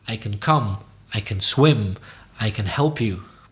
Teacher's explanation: when it's positive, we tend to, as you say the word in a weak way, can, and stress the verb straight after it.